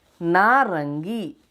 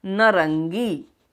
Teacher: जैसे एक शब्द है नारंगी में आ, यह बदल गया अ में, नारंगी परिवर्तित हो गया नरंगी। दीर्घ स्वर आ परिवर्तित हो गया अ में।